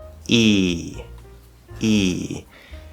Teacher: E uses the front part of the tongue, right? And it's going to be very closed up here towards the top, not touching anything, of course. And we're going to be very far forward, okay? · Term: E vowel sound